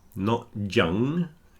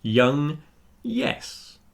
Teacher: Don't put a consonant at the beginning. It's y. Just pretend it's the letter I and you might get somewhere near it.